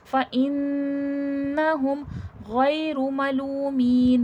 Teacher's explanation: ملو میں واو مد ہے، واو ساکن سے پہلے پیش ہے، کھینچ کے پڑھا جائے گا.